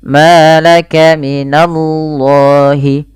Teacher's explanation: lafal Allah ditebalkan huruf lamnya, di sini laf ya, lam lafzul jalalah, yaitu lam tafkhim, dibaca dengan tebal, tapi hati-hati jangan menebalkan na-nya.